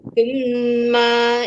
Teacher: Tumma itu wajibul guna, wajib dengung 2 harakat.